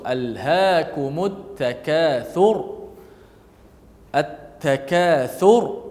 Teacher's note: Contoh, alhaakumut takatsur. At-takatsur, ra tu dimatikan dalam keadaan tebal.